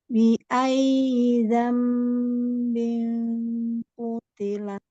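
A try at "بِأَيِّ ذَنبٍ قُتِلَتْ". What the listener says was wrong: Ikhfanya Umi naik Mi. Bingku. Ini bingnya masih kurang naik. Bi ayyi dzambinku. Bing gitu.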